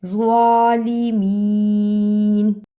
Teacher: زوا کی جگہ پر زا کی آواز نہیں آنی چاہیے